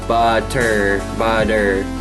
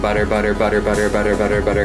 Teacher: the flap that your tongue makes during butter butter that's the same kind of flap that your tongue makes when you roll your RS